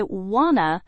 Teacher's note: For example, native speakers do not say want to with 2 separate words in conversation. They say wanna, which sounds like one word, instead of 2 separate words completely. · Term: connected speech